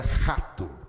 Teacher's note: Preste atenção no Rô, principalmente se você for carioca, porque o carioca vai falar Rô na garganta